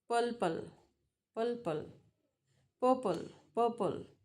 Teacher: So that's a R change into L. Purple. So it sounds as purple.